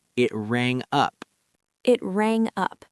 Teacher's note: The G in rang connects smoothly to the U in up.